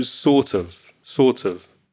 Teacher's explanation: again that pronunciation sorts of the of becomes weak of and the T of sort joins with the vowel sound